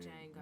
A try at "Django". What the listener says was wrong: No, in Django, the D is silent.